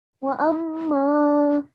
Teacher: a 2-second nasal sound when you're joining the alif to the meme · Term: gunna sound